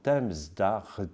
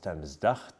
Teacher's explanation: le T occlusive sourde influence le re sonore et le transforme en re constrictive sourde.